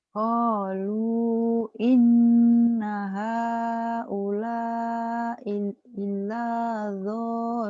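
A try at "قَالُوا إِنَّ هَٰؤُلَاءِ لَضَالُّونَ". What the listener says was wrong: i-nya pendek.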